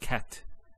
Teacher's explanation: notice there's actually a stop on the letter t so we say cat so the t doesn't have any vowel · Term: sukun